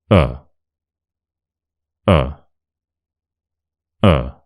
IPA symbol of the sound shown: ə